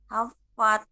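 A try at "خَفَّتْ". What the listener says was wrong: Khofat bukan kha. Ingat, huruf-huruf tebal ada 7 ya. Kho, diangkat dulu suaranya. Khofat.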